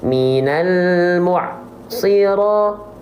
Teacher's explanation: antara bunyi ain dengan bunyi shad jangan sampai terputus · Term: ain sukun